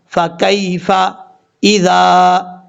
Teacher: ذال میں سیٹی نہیں آئے گی، ذال کے آگے الف ہے، ایک الف کی مقدار اس کو لمبا کر کے پڑھیں گے